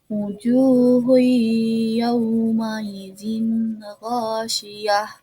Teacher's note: Kita masuk ke ayat kedua, yaitu wujuhu yawma idzin ghasyiyah, di mana domah bertemu dengan waw sukun, yaitu dibacanya matobi'i